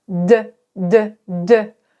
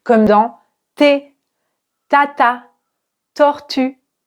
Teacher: c'est la même chose que le thé mais la différence c'est la vibration